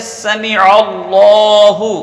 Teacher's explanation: عین درمیان حلق سے ادا ہوتا ہے